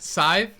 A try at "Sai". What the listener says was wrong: Sai. S-Y. Remove the V. Yeah, remove the V. The V is silent.